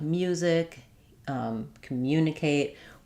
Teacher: So, that's a good one to look at because we have the M and Y sounds together. So, when we have letter U after M in words like music, um, communicate, we add in a little Y sound even though we don't have a letter to spell it